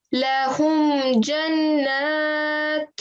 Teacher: Have you noticed that we are giving like a concealed, like a hidden nasal sound at the da, right?